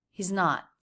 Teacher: The Z sound in he's not connects right up to the N. He's not. Clear stop T there.